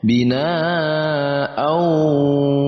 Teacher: wawu kita baca Idgham Bighunnah ada tanwin bertemu dengan wawu maka kita leburkan tanwin atau kita masukkan tanwin kepada huruf wawu dan kita dengungkan huruf wawu